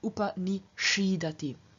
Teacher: And in, for example, upa ni sad, to sit near or to sit facing someone, where the normal present tense of sad would be sidati, here we have a change of the s to a retroflex sh after the I contained in upa ni sad, and so we have a present tense upa ni shidati.